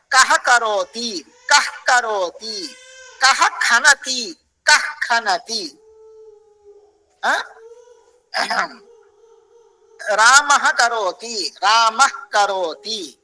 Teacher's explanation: का दूसरा एक रूप है क्या है ये क और ख क ख के के पहले जो विसर्ग आता है आधा विसर्ग उसको जिकवा मूल्य बोलते हैं